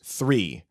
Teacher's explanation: It's got a th. It's got that friction sound instead of the stop sound.